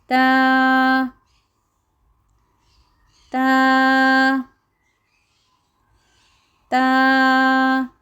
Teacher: ہماری زبان کا جو سرا ہے وہ ہمارے سامنے کے اوپر کے دانت ہیں ان کی اندرونی سائڈ پہ لگتا ہے